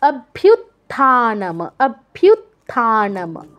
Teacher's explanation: অভ্যুত্থানম, এখানে ভিউ এর পরে যেটা আছে এটা তযুক্ত, কেউ কিন্তু তটাকে স্কিপ করবেন না, প্রথম ততে টাচ তারপর থ